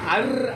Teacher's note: ஆயாவோ தாத்தாவோ சொல்லுவாங்க அப்ப ஏன் அந்த அர்ஜுனா சொல்றேன்னா அர் அப்படின்னு சொல்லும்போது அர்ன்ற வார்த்தை இந்த நாக்கு மேல் தாடையை தொடும் அர்ன்னு அப்ப ஜூன் அப்படின்னு சொல்லும்போது என்ன ஆகும்னா ஜூனா வாய் இப்படி குமிஞ்சு